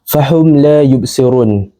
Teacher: Manakala syafawi pula ia berkaitan dengan dua bibir kerana huruf mim tersebut disebut dengan bibir. Cara bacaannya pula huruf mim mati disebut dengan jelas tanpa dengung. Tidak ditahan, tidak berdengung dan tidak diidghamkan. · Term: izhar syafawi